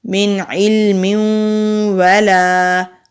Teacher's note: نون ساکن کے بعد عین آ رہا ہے، کیونکہ عین حروف حلقی ہے تو اس لیے یہاں پر ہم اخفا نہیں کریں گے · لام کے نیچے زیر جلدی پڑھیں گے، حمزہ کے اوپر کھڑی زبر ہے، ایک الف کے برابر کھینچ کر پڑھیں گے۔ با کے اوپر زبر ہے، آگے مد ہے، اس کو بڑی مد بھی کہتے ہیں، یہ مد متصل ہے۔